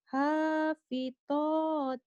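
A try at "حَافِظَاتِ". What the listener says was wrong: Hapitoti, Hapitoti. Siapa yang ngajarin Hapitoti? Hapitoti, Hapizoti bukan to ya. To zo itu.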